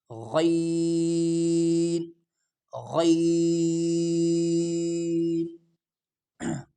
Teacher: یہ غین موٹا کر کے پڑھا جائے گا، گلے پہ زور لگا کے ادا ہو جاتا ہے۔ غین غین، اور با میں قلقلہ کیا جائے گا، اس کو تھوڑا ہلا کر پڑھیں گے۔